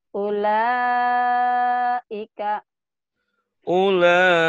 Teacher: Ulaika ini mad wajibun tasir. Dibaca lama lima harokat